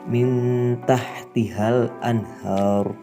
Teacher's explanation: Suara yang dihasilkan dari ikhfa akrob ini nantinya mendekati bunyi n atau suara berdengung lalu ditahan 2 ketukan.